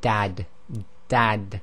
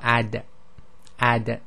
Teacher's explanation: from the the front teeth but when you say the da the tip of the tongue is actually where the top of the teeth touch the gums and it's a softer sound